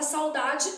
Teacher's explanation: eu tenho o a que é vogal e o u que é uma semivogal Então nesse caso eu tenho um ditongo